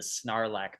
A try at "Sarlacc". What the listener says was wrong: Sarlacc. No N. Sarlacc.